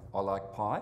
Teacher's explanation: the voice rising at the end of what might just be a statement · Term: high-rising terminal